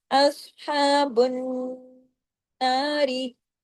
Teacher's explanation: बराबर, और बुन जब पढ़ेंगे नून के साथ जाके जुड़ेंगे तो नून पे तशदीद की वजह से बड़ा गुन्ना होगा, आवाज देर तक नाक में छुपेगी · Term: अकमल गुन्ना